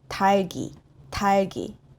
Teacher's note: 리을 stays and 기역 goes to the back. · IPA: [달기]